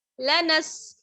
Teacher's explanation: لنسفعا، لام زبر لا، نون سین زبر نس. لنس، سین کی آواز کلیئر ہونی چاہیے، سیٹی کی سی آواز آتی ہے ہلکی سی. لنس، فا زبر فا، لنس فا.